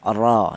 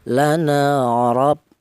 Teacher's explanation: Di mana huruf ra ini berharokat fathah ini dibaca tebal atau dibaca tafkhim ya. Cara menebalkan huruf ra ini menggunakan lidah bagian belakang diangkat ke atas